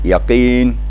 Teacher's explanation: Karena kaf apabila baris di bawah, apalagi ada huruf ya yang mati sesudahnya, maka kaf itu makhrajnya tetap tapi agak tipis